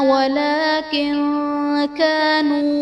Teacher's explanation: وَلَكِن كَانُوا میں نون ساکن کے بعد حروف اخفا میں سے کاف ہے تو یہاں پر اخفا کا قاعدہ ہوگا، یعنی نون ساکن میں ہم غنہ کر کے پڑھیں گے۔